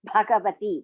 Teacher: Bha is Mahaprana, Ga is Alpa Prana.